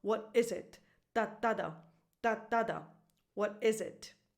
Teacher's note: the stress goes on is which is the verb so is is more important than it